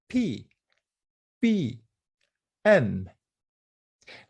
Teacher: of articulation first we have to talk about the bilabial consonants these ones are produced with both lips the upper lip and the lower lip